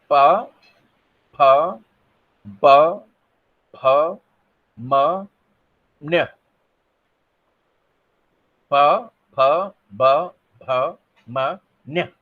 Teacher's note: तो ये ध्वनियां कौन सी, दो ओठ से, मतलब ओठ से जो निकलती हैं, ओष्ठ ध्वनि कहते हैं